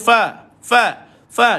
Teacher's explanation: Lidah Tak terangkat maka Fa Ini duduk di dalam huruf istifal